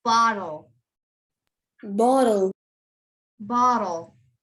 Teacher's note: the two t's are going to make a d sound because there's a l after the t's